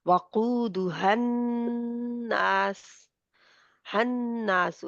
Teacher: अब हन्नासु में नून में ऑटोमेटिकली गुन्ना है